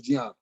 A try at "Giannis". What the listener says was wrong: The G is silent, like in lasagna.